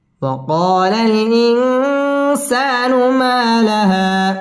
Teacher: ওয়াও ঠোঁট গোল করে উচ্চারণ করতে হবে